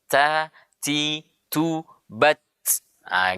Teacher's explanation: Ya, tidak boleh kita membaca huruf ta, ti, tu, bat. Nah, orang Arab ketika membaca ta ada hamesnya, ada aliran nafasnya.